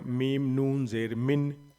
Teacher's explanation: ان نون کے اوپر میں جزم ہے تو میم کے ساتھ مل جائے گا